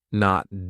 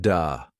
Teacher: the th sound. Your tongue has to come through your teeth.